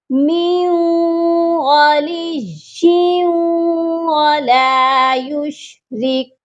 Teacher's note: یا واو دو زیر یوں، یہاں پر بھی ادغام ہوگا، یا کو واو مشدد کے ساتھ ملائیں گے اور غنہ بھی کریں گے کیونکہ تنوین ہے یا کے نیچے